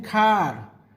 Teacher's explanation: Tongue position is low, open and at the back of your mouth. Lip shape is unrounded and relaxed.